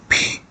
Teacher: English P but more fully aspirated